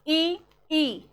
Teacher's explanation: तालु से बोली जाती हैं इ और ई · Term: तालव्य